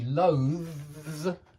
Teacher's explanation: It's that hard voiced TH and then a Z.